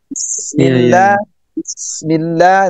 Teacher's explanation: kalau sin ya sudah sofir, berdesis, ditambah lagi rikhwah, suaranya mengalir, ditambah lagi napasnya mengalir